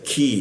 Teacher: huruf Q itu di sikut tenggorokan kita turunkan ada hembusan udara ketika dibaca ki